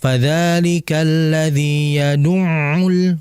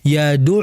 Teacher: ain ini kan pengucapannya lewat tengah tenggorokan, makhrajnya ya, yaitu tengah tenggorokan, otomatis tidak ada sangkut pautnya dengan hidung. Namun lapangannya dalam prakteknya masih banyak saudara kita yang membaca huruf ain itu lewat hidung.